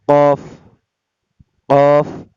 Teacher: জিহ্বার গোড়া তার বরাবর উপরের তালুর সঙ্গে লাগাইয়া 2 নক্তাওয়ালা কফ